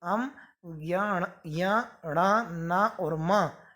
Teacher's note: इनका उच्चारण स्थान नासिका है।